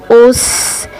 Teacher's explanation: जब यह अदा होंगे तो सीठी की आवाज के साथ यह अदा होंगे · हमारी जबान नीचे वाले दांतों के साथ टकराने के साथ-साथ ऊपर वाले दांतों के से भी टकरा रही है।